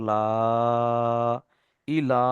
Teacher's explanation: লামের উপরে খাড়া জাবার এসেছে, খাড়া জাবারটি আলিফ মাদ্দার সমতুল্য, এক আলিফ পরিমাণ টান দিয়ে পড়তে হবে।